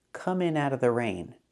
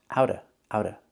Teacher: The T in out is pronounced as a fast D. It's between vowels.